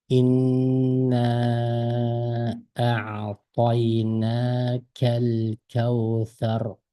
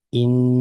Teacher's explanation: nun harfida to'xtab, xuddi uzun o'qigandek, yani buni uzun tovush mad demaymiz, ammo ixfa deymiz. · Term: g'unnalik ixfa